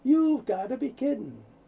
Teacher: You can say you have all you want, but typically casual conversation you're going to hear you've. Very similar sounds, so you don't hear got to, you hear gotta.